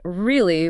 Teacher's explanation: if you say really with a falling tone, it's a statement, like I really mean it. · in both cases, the stress is on the first syllable